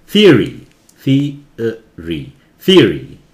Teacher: काफी अमेरिकन इसे थियोरी बोलते हैं, थी ओ को बिल्कुल उड़ा देते हैं